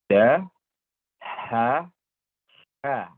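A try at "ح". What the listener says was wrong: Say it one more time, the last one. You said ja, ha, ha.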